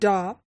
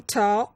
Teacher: the sound da differ from ta only in the amount of time it takes for the vocal cords to vibrate after making the consonant sounds. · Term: voice onset time